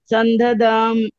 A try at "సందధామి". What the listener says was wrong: సందధామి, ఇకారం వరకు సందధామి